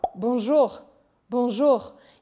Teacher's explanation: esse R do final ele tem mais ar nele